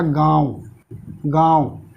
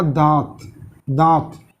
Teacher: ये किससे बोले जाते हैं, नाक और मुंह के सहयोग से बोले जाते हैं। कैसे बोले जाते हैं, नाक प्लस मुंह के सहयोग से बोलते हैं। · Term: अनुनासिक